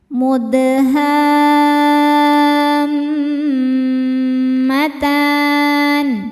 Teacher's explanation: Sebab ada huruf qalqalah yaitu dal yang sukunnya sukun asli dan ada di tengah bacaan. Cara bacanya dipantulkan dengan pantulan yang kecil. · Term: qalqalah sugra